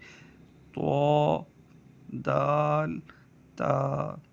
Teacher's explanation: زبان کی نوک اور اوپر کے دانتوں کی جڑ سے ادا ہوتے ہیں۔ جو اوپر کے دانت ہیں زبان کی نوک ان سے ٹکرائے گی تو یہ ادا ہوں گے۔ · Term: حروف نطعیہ